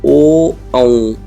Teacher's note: तो कंठ से भी आवाज बनाई ओठ घूमे · कंठ से भी आवाज़ बनाई, ओठ घूमे, मतलब कंठ का ओठ का इसमें क्या रहा, रोल रहा, दोनों का रोल इकट्ठा रहा है तो उसे ओष्ठकंठ बोलेंगे। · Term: ओष कंठ